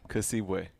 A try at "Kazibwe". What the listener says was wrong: Kazibwe. There's a Z. I don't know Ugandan, so in theory, I may say it wrong, but I think it's Kazibwe.